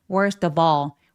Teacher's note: 올 아닙니다, 여러분. 턱 길게 어처럼 발음해 주시면 돼요. Worth of all. · 그래서 계속 지금 연음이 되는데 그래서 전체 소리는 worst of all, worst of all. 그리고 all 아닙니다. 여러분 턱 길게 어처럼 발음해 주시면 돼요.